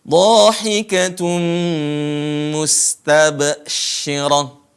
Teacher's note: di sini perhatikan huruf Sin jangan sampai dibaca Qalqalah